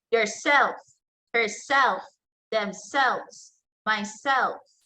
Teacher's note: intensive and reflexive pronouns, it receives stronger stress on the second syllable.